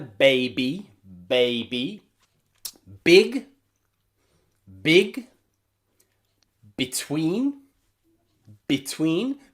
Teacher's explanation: the letter b is nearly always a bilabial that means two lips voiced sound